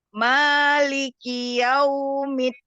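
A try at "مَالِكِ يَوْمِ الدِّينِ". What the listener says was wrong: Ya, kafnya kasih hamas lagi. Maliki yaumiddin. Ki itu ada harokat kasroh. Jangan maliki kiau. Maliki yaumiddin. Selesaikan harokat kasroh di kaf.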